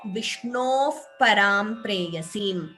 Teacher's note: Here Vishnoho, that is Visarga followed by Pa, you get Upadhmaniya. So Vishnov Param Preyasim.